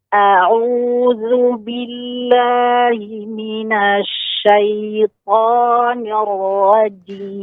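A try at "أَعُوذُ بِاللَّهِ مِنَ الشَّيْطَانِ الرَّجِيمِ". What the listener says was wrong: Ya, pada nunnya tadi ya, jangan nash. Ya, nanya agak manjang itu, agak bervolume. Ya, agak dipanjangkan. Seluruh huruf yang berharakat, volumenya sama. Ya, getarannya sama. A'udzu billahi jangan nash gitu, Bu.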